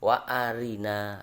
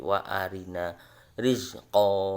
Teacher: Ketika ada ro itu kasro, maka dibaca tipis. Seperti contoh wa arina, ro-nya ri ini dibaca tipis.